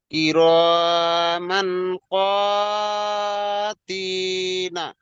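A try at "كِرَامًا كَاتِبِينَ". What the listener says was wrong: এখানে ক নেই, এখানে আছে কাফ আলিফ জাবার কা। কিরমা কা।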